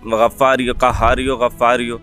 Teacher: آغاز میں جو شعر پڑھا وہ دیکھیں، غفاریو قہاریو غفاریو، تو یہ جو یہ کے ساتھ واو ہوتا ہے نا تو وہ اس کے ساتھ ملا کے پڑھتے ہیں، یہ مرکب عطفی ترکیب عطفی کہلاتی ہے، تو پچھلے لفظ کے آخری حرف کے ساتھ واو کو ملا دیا جاتا ہے، تو الگ الگ توڑ کر نہیں پڑھا جاتا ہے، اس کا خیال کیجیے گا۔